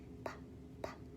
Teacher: So there's four sounds, the P, B, W, and M, the sounds that those make. So P and B, those are stops because we're going to stop the air.